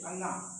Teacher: अनुनासिक क्योंकि उनका उच्चारण जो होता है क्रमशः हमारे नासिक मतलब नाकों के माध्यम से होता है